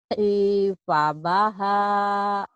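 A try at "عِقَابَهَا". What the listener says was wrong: Bukan ifabah, titiknya 2 Ibu.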